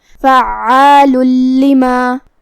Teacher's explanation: پھر حرف اللام آتا ہے کلمت لما میں، یہاں حکم ہے ادغام، جو کہ ادغام کا معنی ہے حرف کو حرف میں داخل کرنا، اور تنوین کی اصلیت نون ساکن ہوتی ہے، تو ہم یہ تنوین کو لام میں داخل کر کے بغیر غنہ سے لیکن تشدید کے ساتھ یہ حکم کو ادا کریں گے